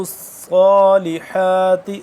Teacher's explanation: صاد کھڑا زبر صا ایک الف کے برابر لمبا اور صاد کو موٹا پڑھیں گے